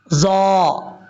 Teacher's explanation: ضا جو ہے یہ بھی حروف مستعلیہ میں سے ہے، پر پڑھا جائے گا